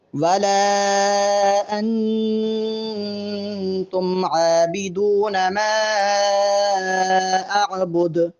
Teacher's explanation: ولا اور ما پر مد ہے، دونوں مقامات کو لمبا کرنا ہے، اور انتم کے نون پر غنہ کریں گے